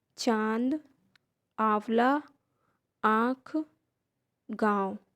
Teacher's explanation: अनुनासिक के उच्चारण में ध्वनि नाक और मुंह दोनों के साथ निकलती है